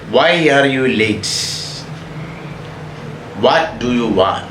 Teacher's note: WH questions, question വേർഡിൽ ആരംഭിക്കുന്ന എല്ലാ ക്വസ്റ്റ്യൻസും falling intonation എക്സാമ്പിൾസ് ആണ്